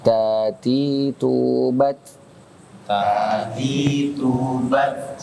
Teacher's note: ta itu ujung lidah bertemu dengan pangkal gigi seri atas tuh